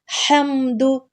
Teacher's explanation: ہا کو حلق کے درمیان سے نکالیں گے، اور دال پہ پیش ہے، اس کو بالکل لمبا نہیں کرنا.